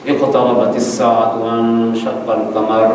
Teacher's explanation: آپ ایک را کی جگہ کئی را ادا کر رہے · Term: تکرار